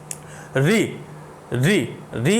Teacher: आपकी जीभ जो है, जीभ का जो अगला हिस्सा है वो आपके मुंह के ऊपर वाले हिस्से को टच कर रहा है। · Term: मूर्धन्य स्वर